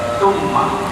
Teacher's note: dia ada sifat dengung itu ada dengung maka keluar daripada hidung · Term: mim syaddah